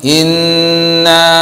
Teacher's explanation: Inna, nun bertasdid, itu dibaca dengung. Bukan cuman inna saja, tapi inna, nunnya berdengung, didengungkan, gunnah.